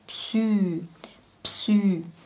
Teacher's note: Und dann kommt ein Ü, ein langes Ü.